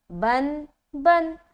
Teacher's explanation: तनवीन के अंदर नून की आवाज़ छुपी होती है। ठीक है, फॉर एग्जाम्पल जब हम पढ़ेंगे अलिफ नून बा नून ज़बर बन, और बा दो ज़बर बन, दोनों में एक ही आवाज़ आ रही है, बन बन।